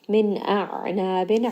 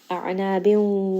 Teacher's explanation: ayn is going to be from the middle of the throat, it has tawassut.